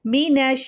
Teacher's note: نون کو شین سے ملائیں گے، نون فتحہ شین شدہ نش مینش، شین جب ساکن ہوتا ہے تو اس کی آواز منہ میں پھیلتی ہے